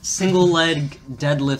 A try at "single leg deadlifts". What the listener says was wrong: You said lead, not leg.